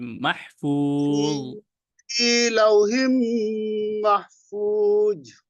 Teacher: জ মোটেও কিন্তু জিহ্বা বের হবে না, কিন্তু ভিতরে মোটা করতে হবে। মাহফুজ, في لوح محفوظ জু হয়ে যায়।